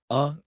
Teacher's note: The schwa is the sound of laziness. It sounds like a weak grunt. Uh, in English, any vowel that is not stressed turns into a schwa.